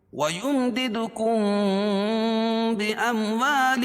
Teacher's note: کم میم ساکن کے بعد با آ رہی ہے تو یہاں اخفاء شفوی ہوگا. اس میں غنہ کر کے پڑھیں گے